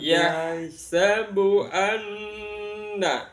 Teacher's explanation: nun tasydid dibaca gunnah, mendengung